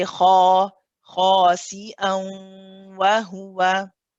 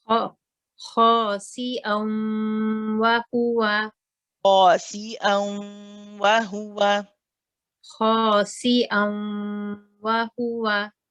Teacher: you'll notice that we did stretch the ha for 2 counts